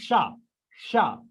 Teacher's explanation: इसका उच्चारण रगड़ या घर्षण से उत्पन्न उष्म वायु या गर्म वायु से होता है, इसीलिए इसे उष्म व्यंजन कहते हैं, ठीक है।